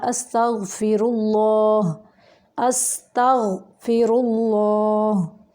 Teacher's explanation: اللہ کا لام جو ہے یہ موٹا پڑھیں گے اور را کو بھی موٹا پڑھیں گے۔